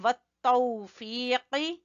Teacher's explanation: قاف زبان کی جڑ سے